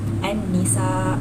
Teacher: Dan alif lam syamsiyah pula misalnya bertemu dengan huruf nun, seperti an-nisa. huruf alif lam pada lam syamsiah itu bergabung dengan huruf seterusnya tanpa menyebut lam. Alif lam itu tidak disebut.